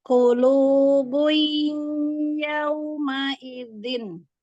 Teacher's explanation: waktu di awal sampai setengahnya belum masuk hidung. Nah, setelahnya lagi masuk hidung. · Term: durasi guna